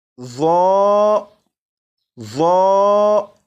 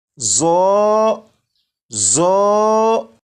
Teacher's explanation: اگر کسی نے سیٹی کی آواز کے ساتھ اسے پڑھا تو یہ درست نہیں ہوگا، بلکہ اسے بغیر سیٹی کی آواز کے پڑھیں گے